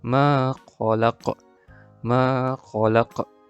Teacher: bunyi lantunan pada huruf qaf di akhir kalimah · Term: qalqalah kubra